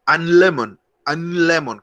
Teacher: donde van la por donde se posiciona la lengua al decirlo porque la n es nasal y la l es dental entonces ya son pronunciaciones distintas